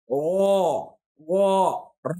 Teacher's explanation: تو اس میں صفت تکرار ہے, یعنی را کے اندر ایک صفت ہے, صفت تکرار, لیکن اس صفت کو ہمیں یہاں پر ہائڈ کرنا ہے, چھپانا ہے. تو سمپل سا بولیں گے او, را نہیں بولیں گے بلکہ او.